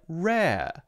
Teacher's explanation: the second R sound at the end of the word or the end of the syllable is instead more open like rare